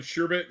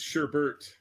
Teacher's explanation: with an additional R in the second syllable